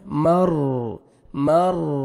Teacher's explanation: زبان کو آپ نے وابریٹ نہیں کرنا، ہلانا نہیں ہے · را ساکن سے پہلے زبر ہے، میم کو را کو آپ نے پر کرنا ہے